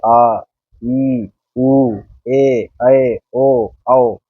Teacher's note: दीर्घ स्वर को जो बोलते हैं जब हम, जैसे आ, ई, उ, ए, ओ, औ, इनको बोलने में, इनका उच्चारण करने में ह्रस्व स्वर से दुगना समय लग रहा है।